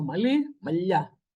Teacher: So you add an A to form the plural, yeah? The E disappears and the L gets palatalized.